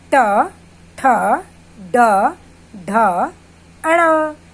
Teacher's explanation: जब हम ट वर्ग वाले व्यंजनों को बोलते हैं तो हमारे जो जीभ का आगे का भाग है वो हमारे दांतों के पीछे उभरे हुए भाग को छूती है। जीभ का पहला हिस्सा, जो सबसे आगे का हिस्सा है, वो हमारे दांतों के पिछले जो भाग है ना, पीछे जो उभरा हुआ भाग है, उसको छूती है, इसलिए हम इसको ट वर्ग कहते हैं।